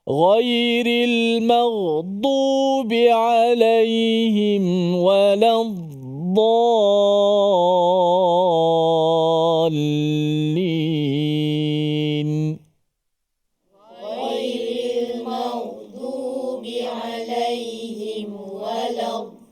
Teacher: Mana huruf dot kita cuba bunyikan suara dia sedikit ketika dia mati itu, tidak seperti kita baca walad, kita putuskan suara. Dot bukan huruf yang putus suara. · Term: huruf rakhawah